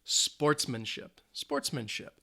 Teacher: three syllables the stress is on the first syllable